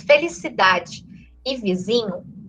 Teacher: o fato de eu ter a sílaba tônica na penúltima posição, felicidade e vizinho, a vogal da última sílaba vira uma semivogal. Ela perde intensidade.